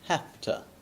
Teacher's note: Usually, the word have, the v sound is really usually changed to a f sound. And remember, upper teeth on lower lip, have to, with a ah sound.